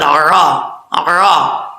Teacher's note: عین کو پڑھتے وقت کلیئر کرنا ہے، حمزہ کی آواز نہیں آنی چاہیے